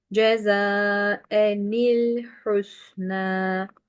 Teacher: Bu tenvinin içindeki nunu okumayacaksınız. En demeyeceksiniz.